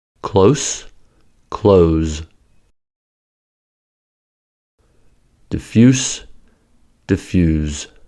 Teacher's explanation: In the following examples, the adjective and verb forms have the same spelling, but differ in voicing.